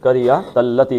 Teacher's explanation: لام کو موٹا نہیں کرنا، تا بھی پتلی ہے